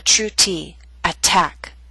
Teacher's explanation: T, although in the middle of the word, is at the beginning of a stressed syllable. So we have a true T, attack.